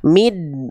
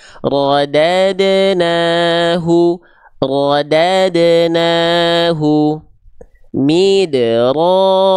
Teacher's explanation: huruf dal sukun dilafalkan tidak dengan memantulkan suara, tidak dengan sifat qalqalahnya